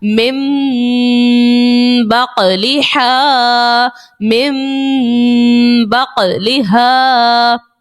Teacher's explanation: next من بقلہا، یہاں دیکھیے نون ساکن کے بعد حرف با آ گیا ہے، اقلاب کا قاعدہ یہاں سے شروع ہے، اقلاب کا قاعدہ لگا دیا اور نون ساکن کی آواز ہم نے نہیں نکالی، اس کی جگہ میم کو پڑھا